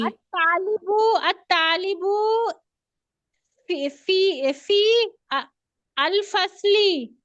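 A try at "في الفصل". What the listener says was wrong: नहीं फिल करे ना, इस फे को जाके यहाँ पे मिलाएं, फिल। नहीं फिल कर दिया तो फिर अल करने की जरूरत नहीं, अलिफ तो खाली है ना, अलिफ को नहीं पढ़ेंगे, ये या भी खाली है, इसको भी नहीं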